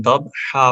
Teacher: जब हम रुकते हैं तो 2 ज़बर अलिफ में चेंज हो जाती हैं, तो हम दब हा पढ़ेंगे।